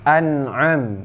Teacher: nun mati bertemu dengan ain yaitu idhar hakiki, tidak berdengung